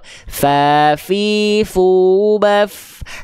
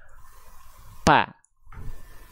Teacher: Jadi huruf fa ini dilafalkan, ujung gigi seri atas disentuhkan dengan bibir bawah bagian yang dalam.